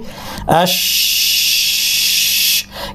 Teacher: জিহ্বার মাঝখান থেকে নিয়ে দাঁত পর্যন্ত জায়গাটায় বাতাসের একটা বাড়তি ফ্লো বা সঞ্চালন হবে · সিনের সাথে পার্থক্য হচ্ছে এই সঞ্চালনটা হচ্ছে মুখের ভিতরে হচ্ছে, এই জন্য এর আওয়াজটা, তাফাসির আওয়াজটা সিনের সফির থেকে ভিন্ন। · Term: তাফাসসি